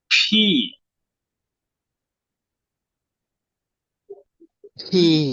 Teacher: Push air out of your mouth between your upper and lower, উপরে এবং নিচের lips, দুই ঠোঁটের মাঝখান থেকে বাতাসটা বের করে দিবেন ফোর্সে।